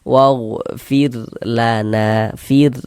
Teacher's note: huruf ra sukun yang sebelumnya harokat kasrah nih, kita baca tipis, kita baca tarkik, sehingga pengkalisan kita tidak naik terangkat ke atas ketika kita mengucapkannya.